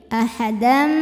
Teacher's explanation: Dam ada hukum idgham bi gunnah sebab ada tanwin fathah menghadapi huruf mim. Maka tanwinnya dileburkan ke mim ahadam, jadi bunyinya m ya, dan kita tahan, dengungkan.